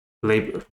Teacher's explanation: the phonogram or becomes a schwa sound